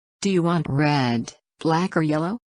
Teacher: Intonation will rise on the first choice or all the choices before the last one and down for the final option to indicate end of the choices.